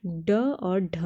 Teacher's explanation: स्थान के आधार पर मूर्धन्य व्यंजन ड और ढ हैं